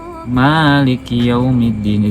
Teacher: membaca mim lam kaf dengan alif menjadi Maliki Yaumiddin, dipanjangkan menurut Imam Al-Kisai dan Asim